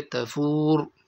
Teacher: وقف کی صورت میں را کو پر کر کے پڑھیں گے